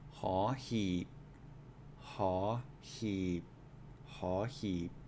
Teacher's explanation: so rising and then a low tone